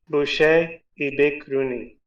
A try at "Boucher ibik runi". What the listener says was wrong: Now you just got to say it faster.